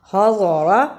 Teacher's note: ضاد کو موٹا پڑھنا، را کو پر پڑھنا